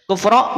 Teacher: inalladina kafaru ba umu kufro asalnya kufron dibaca tanwin karena waqaf kemudian setelahnya ada huruf mad huruf alif maka dibaca o panjang dua harakat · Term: Mad Iwat